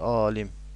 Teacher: Alim sözündə isə uzanma birinci hecada olsa da vurğu ikinci hecadadır.